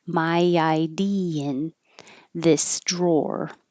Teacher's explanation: The tongue kind of slides and makes a Y.